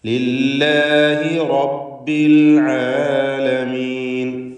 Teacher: റബ്ബി റായിന് തഫ്ഖീം കൊടുക്കണം, ഫത്ഹായതുകൊണ്ട്